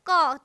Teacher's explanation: क ख कवर्ग पूरा कवर्ग कंठ से निकलता है